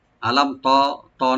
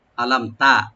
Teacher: আলাম, হামজাকে রাইট দিবেন গলা শেষ থেকে, লামটাকে ওপেন করে পড়বেন, মিমে এখানে কোনো গুণা হবে না, জাহার সফবি, আলাম, আলাম এরকম না, আলাম তারা, তা ওপেন থাকবে, রা একটু ডিপ হবে এখানে